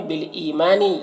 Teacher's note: ई में या मद्दा है, इसे एक अलिफ के बराबर खींच कर पढ़ेंगे।